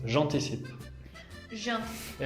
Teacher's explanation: en francés con los verbos que empiezan con vocal, no decimos je anticipe, pero juntamos las dos palabras